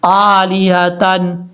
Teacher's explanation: हमजा के ऊपर खड़ा ज़बर है इसलिए इसको लंबा करेंगे